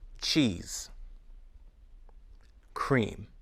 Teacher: little as you say the sound listen e C cheese cream e is a long tense sound your mouth muscles should feel tense or tight e the sound e is a shorter more relaxed sound e